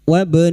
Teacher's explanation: ba sukun yang mati asli di tengah kalimat qalqalah sugro